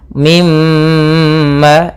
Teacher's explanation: ketika ada mim bertasydid suara nya atau suara gunnahnya ditahan. Mimma 2 harakat.